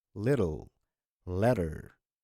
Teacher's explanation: So double T becomes a soft D.